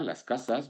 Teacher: México no, en general no aspira la S